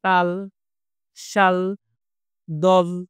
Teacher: এই জাতীয় ধ্বনি উচ্চারণের সময় বাতাস জিভের পেছনের এক পাশ বা ২ পাশ দিয়ে বেরিয়ে যায়। জিভ দাঁত অথবা দন্তমূলে অবস্থান করে। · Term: পার্শ্বিক